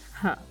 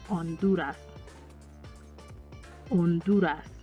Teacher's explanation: in Hawaii, it's pronounced H, whereas in Honduras, it's silent